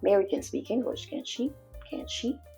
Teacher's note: So your intonation is higher at the end of your question. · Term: higher pitch